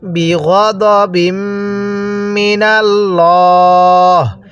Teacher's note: এই লামটাকে আমরা মোটা করে পড়ব, কারণ আল্লাহ শব্দের লামের পূর্বে যদি জবর থাকে তাহলে লামটাকে মোটা করে পড়তে হয়